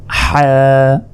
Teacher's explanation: হলকের মধ্যভাগ হতে হা উচ্চারিত হয় হা গলায় চাপ দিয়ে এটি উচ্চারণ করার চেষ্টা করুন হা এরপর